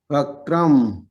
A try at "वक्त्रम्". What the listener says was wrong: वक्त्रम में आधा क है, उसका उच्चारण होना चाहिए।